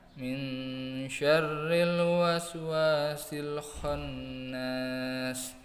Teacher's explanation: ada bacaan ikhfa hakiki, yaitu cara bacanya disamarkan dengan dengung satu alif atau dua harokat. Kemudian juga ada bacaan tasdid.